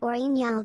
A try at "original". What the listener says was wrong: Did you say Oriental? What is Oriental? That's not like some weird French thing where you don't pronounce the G. It's original.